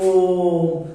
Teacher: तो ओ का उच्चारण हम देर तक कर रहे हैं, तो जब देर तक करेंगे तो ये 3 मात्रा काल का समय लगता है, इसी को बोल दिया जाता है प्लुत स्वर।